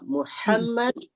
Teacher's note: دیکھیے اس میں بالکل حلق کا استعمال نہیں ہوگا. اور لفظ محمد میں ہا کا استعمال ہوتا ہے، تو اس کو ہم حلق کے درمیانی حصے سے ادا کرتے ہیں